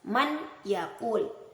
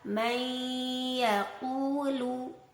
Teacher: Yang benar adalah memasukkan atau mengidghamkan dengan disertai suara mendengung. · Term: idgham bi gunnah